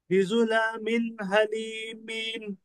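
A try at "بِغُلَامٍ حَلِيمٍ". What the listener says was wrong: बिगुला, गैन है ना। बिगुला मिन हलीमिन। जी, बिगुला मिन حلیم.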